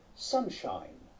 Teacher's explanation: the first part is clearly a low vowel again with F1 and F2 close together and in the second part F1 and F2 are drifting wide apart so the result is a diphthong in this case I and